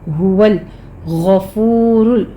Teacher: ہا کو آپ نے ایک حلق سے ادا کرنا ہے سینے کی جانب سے